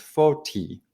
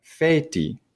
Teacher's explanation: speakers started kind of anticipating that E, and it started affecting that vowel before it. So it became feti.